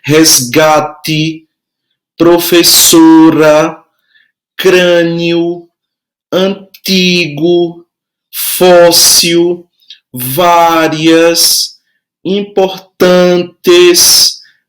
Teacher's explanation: todas elas têm logicamente uma sílaba que é mais forte e você pode perceber também que a sílaba mais forte é a penúltima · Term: paroxítonas